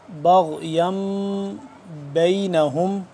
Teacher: میم ساکن ہو گیا، اس کے بعد با آ گیا، تو یہاں پہ ہم کیا کریں گے، اخفا کریں گے